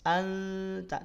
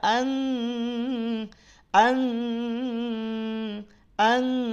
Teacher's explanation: suara di ujung lidah nempel dengan pangkal gigi di atas bukan di Pangkal lidah